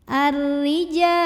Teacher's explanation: Huruf ra dibunyikan secara tarqiq sebab barisnya di bawah kasroh. Maka bacanya tipis, pangkal lidah datar.